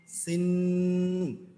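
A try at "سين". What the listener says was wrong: সিন রসিকারের উচ্চারণটা লম্বা করতে হবে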